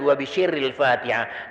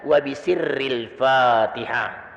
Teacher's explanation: Kalau makharijul hurufnya tidak benar, dia baca shin yang seharusnya sin.